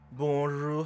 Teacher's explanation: 不是念▁bon，而是在念▁O▁的时候加上鼻音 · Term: 鼻音化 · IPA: /bõʒuʀ/